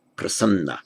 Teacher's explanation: prasadna, the D and the N merge. Prasadna to prasanna.